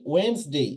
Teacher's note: এখানে ডি এর উচ্চারণ হবে না।